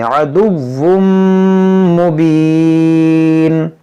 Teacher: देखिए यहाँ पर तनवीन के बाद मीम है तो यहाँ पर इदगाम करेंगे. अदुव्वुम, वुम गुन्ना करेंगे.